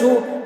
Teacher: پیش کو جلدی پڑھیں، تھوڑا بھی نہ کھینچے، معروف پڑھیں، مجہول آواز سے بچیں